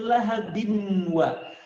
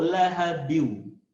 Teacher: Bacanya bukan lahabin wa, bukan lahabin wa, tapi an-nya leburkan ke waw. Jadi bunyi an-nya hilang, masukkan ke waw, lahabiu. Ya, jangan lupa tadi masukkan ke rongga hidung, tahan kadarnya 2 harokat, lahabiu, baru kemudian wa, lahabiu.